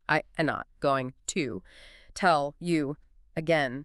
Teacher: Every word is isolated for maximum impact.